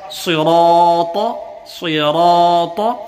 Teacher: یہاں پہلا جو ورڈ ہے ہمارے پاس صراط، صراط، ان میں جو پہلا لیٹر ہے وہ صاد ہے. صاد کو موٹا پڑھا جائے گا اگرچہ اس کے نیچے زیر بھی ہے چونکہ حروف مستعاریہ میں سے ہے. یاد رہے کہ حروف مستعاریہ کا ہر لیٹر ہر صورت میں موٹا پڑھا جائے گا، چاہے اس کے نیچے زیر ہو، چاہے اس کے اوپر پیش ہو، چاہے اس کے اوپر زبر ہو.